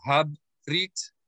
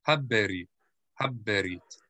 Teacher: the shva is sounded. It'll be a short eh.